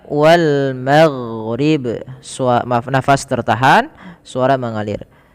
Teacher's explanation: Huruf jahar adalah yang dia tertahannya nafas. Dan ghain juga termasuk daripada huruf yang dia rokhawah, mengalirnya, suaranya dialirkan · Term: huruf ghain